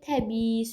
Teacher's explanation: Təbii sözündə iki i var, amma tələffüzdə biri düşür, biri də uzanır.